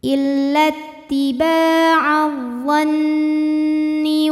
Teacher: Karena nun bertasydid. Cara bacanya dengung. Bunyi n-nya tahan sampai ada suara masuk hidung kurang lebih 2 harokat. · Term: gunnah musyaddadah